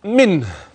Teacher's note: النون الساكنه معي واضحه بينه لوجود الهاء بعدها ولاحظ معي هاء منه تحيد عند وصلها انها مضمومه فقط فليس